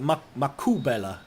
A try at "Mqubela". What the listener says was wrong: Mqubela. It's actually a click. It's a click.